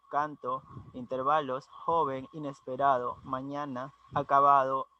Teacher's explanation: están acentuadas en la anteúltima sílaba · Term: palabras graves